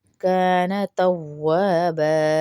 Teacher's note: الف کے برابر کھینچیں گے کیونکہ الٹا پیش ہے، کان توابا، وا کو بھی کھینچیں گے کیونکہ الف مدہ ہے ، کا کو بھی کھینچیں گے کانا میں، کان توابا، كان